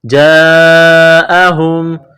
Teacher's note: یہاں مد ہے، اس کو لمبی مد کہتے ہیں، 4 الف کے لمٹ میں کھینچنا ہے ، جاءہم، میم ساکن ہے، اس کے بعد اگلی میم ہے